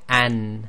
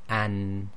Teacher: if you say an and hold the nose, the sound will stop, and this has a stoppage of breath, i.e.